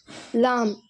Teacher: நாவின் நுனிப்பகுதி மேல் முரசை தொடும் பொழுது வெளியாகிறது